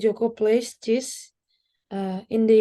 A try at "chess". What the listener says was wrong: Bukan cheese, chess. Chess Jangan ketukar-ketukar ya Kak ya. Beda soalnya. Tulisannya beda, bacanya juga beda.